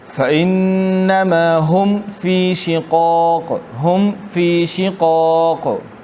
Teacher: فہم فی دونوں کو واضح کرنا ہے، ملانا نہیں ہے، نہ اس میں قلقلہ کرنا ہے، نہ مدغم کرنا ہے،